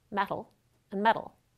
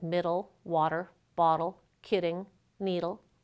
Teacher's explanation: If you're trying hard to be extra clear, you might say metal or metal, but ordinarily that T or D in the middle of the word just becomes an alveolar flap where the tongue taps very briefly at the alveolar ridge, but doesn't allow air pressure to build up.